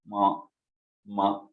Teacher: ऊपू पद्मानियाम ओष्ठो, मकार जो है ओष्ठ से बोला जाता है, और साथ ही साथ वो अनुनासिक है, तो नासिका और ओष्ठ को मिला के बोला जाता है मकार। म जब बोला जाता है तो थोड़ा सा नाक से और थोड़ा सा ओष्ठ जो है